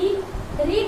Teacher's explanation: मूर्धा में जीभ को थोड़ा टंग में ऊपर हम उठाते हैं और मोड़ देते हैं